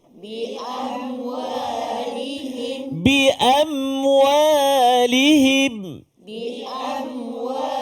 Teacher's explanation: Mim mati bertemu dengan waw. Dengung ke tak dengung? Tak dengung. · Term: izhar syafawi